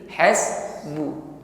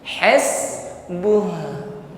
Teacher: ditutup dengan huruf ha ya, ada rakhawah. Jadi tampakkan sifat pada huruf ha-nya.